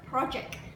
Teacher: the emphasis is on the first syllable, pro